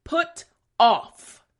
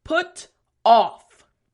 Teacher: Front teeth, bottom lip for the F sound.